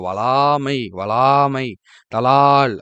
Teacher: லா என்னும் எழுத்தை 3 மாத்திரை அளவு நீட்டி ஒலிக்க வேண்டும். அதாவது 3 மாத்திரை. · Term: உயிரளபடை